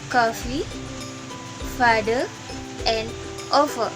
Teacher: Ketika kita mengucapkan V, bibir bawah ditekan ke gigi atas dan menyebabkan udara memaksa masuk di antara mereka dan tidak ada getaran pita suara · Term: labiodental fricative